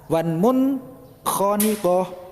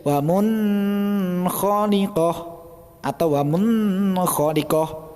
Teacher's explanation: Cara membacanya harus jelas karena nun sukun bertemu dengan salah satu huruf idhar, yakni huruf kha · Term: bacaan izhar